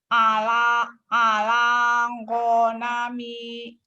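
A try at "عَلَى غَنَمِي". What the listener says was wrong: Ala, ini jawabannya keluar. Honami. Ala gonami. Jangan ngopur. Ala ngomor. Ala gonami. Go biasa. Ala gonami.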